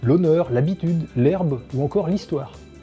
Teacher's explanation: un H dont on entend pas du tout la trace en parlant